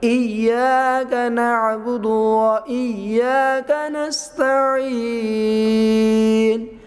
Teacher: نستعین عین کو آواز نکالتے ہوئے یا مدہ ہوا اور آگے وقف ہوا ہے